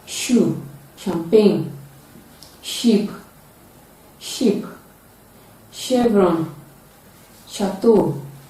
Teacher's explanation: it is a voiceless palatal alveolar fricative sound · It is produced with partial obstruction, and it is paired with ch. It is a voiceless sound, and it is produced when the tip of the tongue is touching the alveolar ridge, and the middle of the tongue is raised to the hard palate. · Its spellings include CH, S, SH, and T. It is a voiceless palato-alveolar fricative sound. It can be realized at the initial, middle, and final positions of English words.